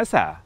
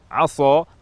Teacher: Yang kedua, tempat keluar huruf mungkin tidak berubah, tetapi yang berubah sifatnya. Misalnya kata asa menggunakan huruf sin dengan sifat tarqiq, tipis. Jika berubah menjadi tafkhim, tebal, aso, maka huruf sin secara pasti berubah menjadi huruf shad, dan maknanya dari harapan semoga menjadi bermaksiat.